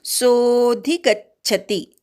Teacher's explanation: सो नंतर अवग्रह आहे त्यामुळे सो वाढवायचा आहे. गच्छति मधल्या ग वर आघात घ्यायचा, शेवटचा ती ऱ्हस्व आहे, पटकन उच्चार करायचा.